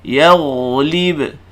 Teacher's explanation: Dengar saya sebut yaghlib. Tuan-tuan akan perasan bunyi ghin tadi tu dibunyi panjang dan suara tidak putus. Kalau saya tidak putuskan suara yaghlib, tak, saya baca macam ni, yaghlib. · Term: ghin sukun